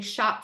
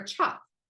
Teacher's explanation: I see the sh and the CH are made in the same place